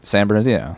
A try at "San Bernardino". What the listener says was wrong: No, I think you pronounced it like maybe you said it like you were like San Bernardino or something like that. Because I think you pronounced it like Saint Bernard.